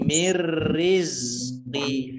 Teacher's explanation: Jadi za-nya tidak memantul.